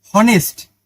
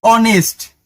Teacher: দেখো এইটা H O N E S টি উচ্চারণ হওয়া উচিত ছিল কি এইচ ও হনেস্ট, কিন্তু না, এটার উচ্চারণ হচ্ছে অনেস্ট। এইচটা হয়ের মতো উচ্চারিত না হয়ে একটু ঘাড়তেরামি করে স্বরে অ এর মতো উচ্চারিত হয়েছে